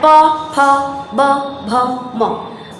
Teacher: देखिए इसके लिए आपके दोनों होठ बार बार सटते हैं, यानी ये ओष्ठ से बोला जाने वाला वर्ण है। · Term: प वर्ग